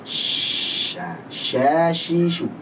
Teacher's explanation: Tafashi itu menyebar suaranya, menyebarnya nafas dan suara di mulut.